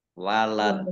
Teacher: Karena dal sukun maka menjadi eh, kolkolah atau memantul. Walad, dan dibaca pendek waqafnya karena tidak ada tanda panjangnya.